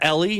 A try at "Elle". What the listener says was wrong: No, you said Ellie. You read E-L-L-E as Ellie.